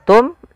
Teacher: izhar artinya jelas syafawi berkenaan dengan bibir karena makhraj daripada huruf Mim daripada bibir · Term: izhar syafawi